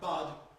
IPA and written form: bʌd (bud)